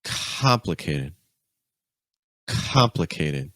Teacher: The stress is on com. That first syllable is really high.